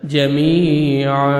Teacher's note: Stop کریں گے الف مدہ ہو جائے گا. جمیعا ہے جب سٹاپ کریں گے ایک الف زبر لگا کے الف عین زبر الف ہو جائے گا اور 1 سیکنڈ آپ نے عین کو کھینچنا ہے